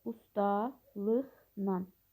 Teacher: L samiti N samitinə çevrilir · Q samitin x kimi tələffüzü. Amma la şəkilçisi Nan şəklində tələffüz olunur.